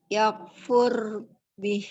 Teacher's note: Ro sukun diawali fathah dan dhammah, ro sukunnya jadi tebal.